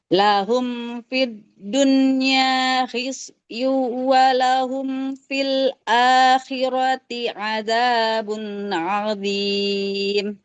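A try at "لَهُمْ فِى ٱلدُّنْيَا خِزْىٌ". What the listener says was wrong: Oke, sudah bagus panjang pendeknya, tapi ini tidak boleh dibaca hisyu. Huruf zai jangan jadi sin ya. makhraj memang, tapi kalau huruf sin itu mengalirkan nafas, zai tidak. Lahum fit dunya khizyu. Nah, khiz tidak khiz.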